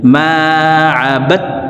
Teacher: এই জবরওয়ালা বাটি সরাসরি তাসদিদওয়ালা তাকে ধরবে, মাঝখানে জজমওয়ালা দাল বাদ পড়ে যাবে।